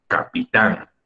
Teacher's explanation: Es claro que es aguda, porque tan, la sílaba tan suena mucho más fuerte.